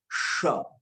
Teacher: वो मूर्धा से निकल रहा है श, इसलिए उसमें थोड़ा अनकंफर्ट महसूस करते हैं बोलने के टाइम पर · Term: मूर्धन्य